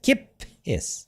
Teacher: Double P. Hold the P sound slightly longer because of the double letter.